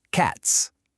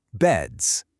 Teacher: Pay attention to the very end of the word. The S in cats is the sharp little hiss, right? But the S in beds it's a buzz. They're not the same sound at all.